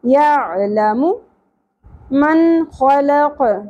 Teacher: لام کی زبر کو اور میم کے پیش کو زیادہ نہیں کھینچنا